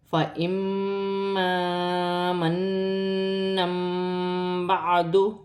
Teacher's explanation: قرآن پاک میں جب بھی 2 زبر کے تنوین کے بعد با آئے گی تو وہاں پر چھوٹی سی میم لکھی ہوتی ہے. 2 زبر کے تنوین کو میم سے بدل کر غنے کے ساتھ ادا کیا جائے گا، انقلاب کا قاعدہ کہتے ہیں، جیسے فَإِمَّا مَنًّا بَعْدُ.